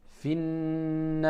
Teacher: j'ai alif wal lam. j'ai une shidda dans le noun, donc je sais que je ne prononce pas le lam